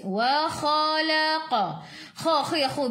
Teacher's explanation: Kha khiyahu biar ada angin biar menggelegak.